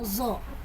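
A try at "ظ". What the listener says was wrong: Jangan zo. Makrotnya itu dia ujung lidahnya menempel ke ujung gigi sari atas. tidak zo.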